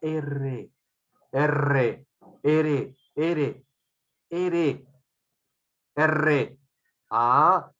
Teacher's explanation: el ápice de la lengua produce vibraciones · la punta de la lengua produce vibraciones con la salida del aire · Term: vibrantes